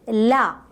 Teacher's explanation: Then the airflow is completely blocked. The air is let out through the sides of the tongue.